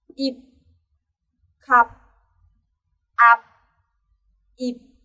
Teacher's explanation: Phụ âm phiếp và phiếp đứng cuối thì không thể phát âm bật hơi được